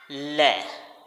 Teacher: इसके उच्चारण में हवा जीभ से बगल, जो जीभ की दोनों साइड होती हैं, जीभ की बगल से निकल कर जाती है और जीभ ऊपर के दांत जो होते हैं हमारे, उनके मसूड़ों के साथ स्पर्श करती है। · आप ले का उच्चारण बोल कर देखिए, ले, तो हमारी जीभ मुड़ेगी और मुड़कर ऊपर वाले दांतों के मसूड़े से स्पर्श करेगी